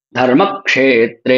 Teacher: यह दोनों ही क्ष और त्र दोनों ही गुरु हैं। इसलिए इनके उच्चारण में ज्यादा समय लग रहा है। और ध और म इनके उच्चारण में कम समय लग रहा है। · और ध और म इनके उच्चारण में कम समय लग रहा है। दोनों लघु है।